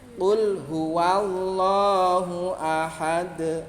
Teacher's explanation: Ya, ahad ada pantulan. Pantulannya itu lebih besar karena huruf qalqalah asalnya hidup. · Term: qalqalah kubro